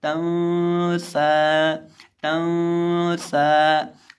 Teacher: हम नून के ऊपर इख्फा करके पढ़ेंगे · यहाँ सीन है और सीन हरूफ इख्फा में से है, इसलिए यहाँ इख्फा होगा, तो इसको पढ़ेंगे तंसा, तंसा। और इसी तरह सीन को लंबा करके पढ़ेंगे और इसी तरह इसके अंदर हम सीटी की आवाज़ पैदा करके पढ़ेंगे